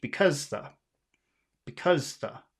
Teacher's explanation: we have the, which is small, and cause, which is big, and then you have the, which is small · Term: rhythm